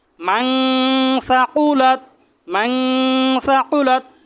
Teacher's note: নুন সাকিনকে নাকের বাঁশি থেকে গুণনা করে পড়তে হবে